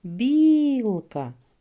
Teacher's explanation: перший склад він є наголошеним